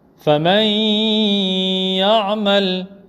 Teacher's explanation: Dans ce cas, on fera le idgham bil ghunna. On va emboîter le noun dans le ya. Faman ya'mal, en faisant le ghunna.